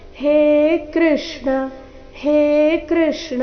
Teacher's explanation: ಅದು ದೀರ್ಘ ಬರುತ್ತೆ ಬರಬೇಕು ಹೇ ಕೃಷ್ಣ ಇಲ್ಲಿ ಹೇ ಕೃಷ್ಣ ಈ ರೀತಿ ಕೃಷ್ಣ ಕೃ ಅನ್ನ ದೀರ್ಘ ಮಾಡಬಾರದು ಹೇ ಅಕ್ಷರವನ್ನು ದೀರ್ಘ ಹೇಳಬೇಕು